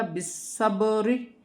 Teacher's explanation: بالصبری، را باریک پڑھی جائے گی، سواد کو موٹا پڑھا جائے گا، سیٹی کے ساتھ اور موٹا پڑھا جائے گا۔ بالصبری، سواد سیٹی والا بھی ہے، اور موٹا بھی ہے، اور مشدد بھی ہے